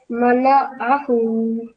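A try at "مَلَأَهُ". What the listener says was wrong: So this alif sound, try not to mix it with ain sound. So malahu, thin sound, by its smiling face. This when you're pronouncing a sound, just like smiling face, thin sound. Mala'ahu. So you need practice to practice the alif sound, which is thin one, then ain sound, which coming from your throat. So a sound with alif carrying fatha is a, and ain carrying fatha is a.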